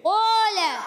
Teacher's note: قولا، تو اس کا قاف بھی موٹا، الف بھی موٹا